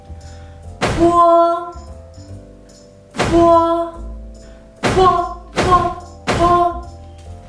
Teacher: Same as bo. Po is a bilabial and plosive initials, but the only difference is that po is aspirated. When you pronounce po, the airflow is stronger and you need to exhale more.